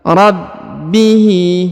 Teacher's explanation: huruf ba ditahan dan ditekan 2 harokat ya, karena di atasnya terdapat alif kecil, terdapat tanda tasdid.